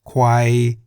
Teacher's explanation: Kwai in the middle tone